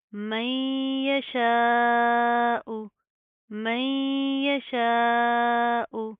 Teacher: ہم غنہ کریں گے, نا کے اندر ساؤنڈ پیدا کریں گے